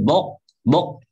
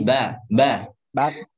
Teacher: Ba-nya tipis, qaf-nya tebal ya. Baqo. Jangan bok, bok, tapi ba, ba.